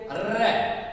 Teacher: र प्रकंपन हो रहा है, र लुढ़क रहा है तो लुंठित वर्ण हो गया।